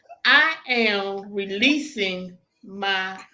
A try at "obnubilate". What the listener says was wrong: Nope, you're saying too many syllables, boo. Obnubilate.